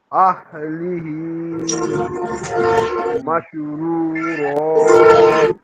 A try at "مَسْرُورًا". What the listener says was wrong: এই যে এটা সিন নাকি শিন জহির ভাই? সিন, তাহলে উচ্চারণে আরেকটু স্পষ্ট সিন করেন, অনেকটা শিনের মতো হচ্ছে আপনার।